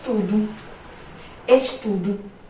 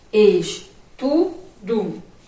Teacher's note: Então, o E permaneceu com o som de E. Já que, quando a sílaba final é fraca, que foi o caso de estudo, o O perdeu o som dele e teve o som de U